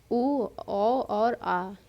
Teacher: वृत्तमुखी होते हैं जिनके उच्चारण में होंठ हैं गोलाकार हो जाते हैं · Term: वृत्तमुखी स्वर